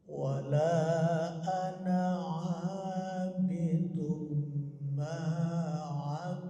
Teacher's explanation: Yang kedua bacaan ma'abadtum, dalnya hilang. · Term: idgham